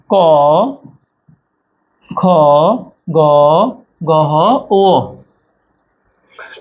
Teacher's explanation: অল্পপ্রাণ মহাপ্রাণ অল্পপ্রাণ মহাপ্রাণ নাসিক্য